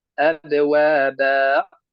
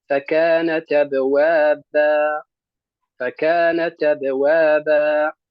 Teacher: يعني بمد الباء وليس بختم القراءة بالهمز